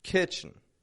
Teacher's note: First syllable, strong on that I. Ki. The second kind of almost drops the E. Chin. Kitchen.